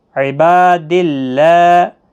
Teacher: اور پھر دال کو اللہ کے لام کے ساتھ ملانا ہے